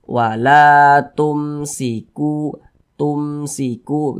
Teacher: dibaca jelas tidak berdengung jadi dibaca pendek saja wala tumsiku tumsiku gitu dibaca pendek saja jangan dibaca wala tumsiku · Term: izhar syafawi